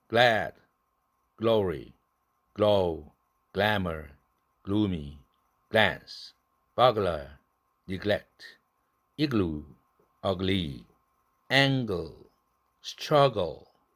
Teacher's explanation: 성절 자음 L이 왔을 때에도 역시 그것도 L이니까 laterally released로 발음해 주기 바랍니다.